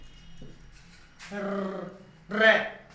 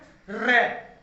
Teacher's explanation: इनके उच्चारण में जीभ कंपन करती है या कंपन करते हुए नीचे गिरती है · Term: परकंपित